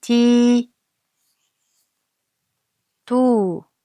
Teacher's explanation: Dommadan so'ng vav harf keldi va u unlisini cho'ziq talaffuz qildik.